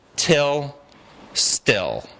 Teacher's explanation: Till, little puff of air. Still, nothing at all. Yep. So we have these aspirated tas.